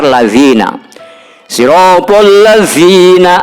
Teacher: keluarnya jadi antara ujung lidah dan ujung gigi sebelah atas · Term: Zal